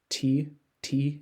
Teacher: T you are your tongue is cutting off that airflow and in English the t is alveolar which refers to kind of the roof of the mouth t t you could say it yourself and hear that where